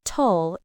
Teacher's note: The second syllable, tull, is unstressed. It's quick, soft, and at a lower pitch.